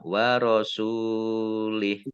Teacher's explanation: Kemudian lihnya wakof, haknya dibaca sukun, dibaca pendek, tidak ada tanda panjangnya.